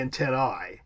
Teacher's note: In Latin, the correct pronunciation of an AE diphthong would be an I, so it would be antennae.